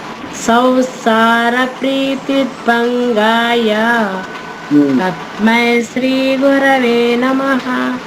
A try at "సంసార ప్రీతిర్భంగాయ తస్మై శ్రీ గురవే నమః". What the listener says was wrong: Very good.